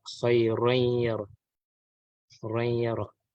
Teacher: So ذرة خيرا يرى. And then for the idgham ma'al gunnah, there is nasal sound, but there is idgham